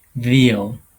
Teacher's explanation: It's a labiodental because you are using your upper teeth and your lower lips to do this sound. And then it's a fricative because you have a little space for the air stream to go out, and you, you you are hearing a hissing sound. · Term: V sound